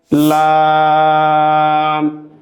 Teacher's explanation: লামের মাখরাজ হলো জিহ্বার আগার কিনারা উপরের দাঁতের মাড়ির সঙ্গে লাগিয়ে